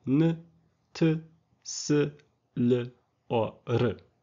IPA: n t s l or ɾ